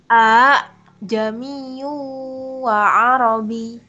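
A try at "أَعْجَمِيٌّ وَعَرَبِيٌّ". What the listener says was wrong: Nah, itu hati-hati. Itu ain ya. Jadi jangan sampai kita mikirin hasil terus malah ainnya terabaikan. Jadi tetap ainnya tuh tetap bainiyahnya sifatnya tetap jelas ya. Jadi kan itu hamzah ain. Hamzah, hamzah, ain.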